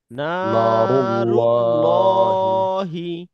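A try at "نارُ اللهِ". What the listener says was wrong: আরো মোটা করতে হবে।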